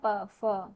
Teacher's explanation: होठ हमारे मिलते हैं ना, प फ, होठों के बीच से हवा निकलती है। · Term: ओष्ठ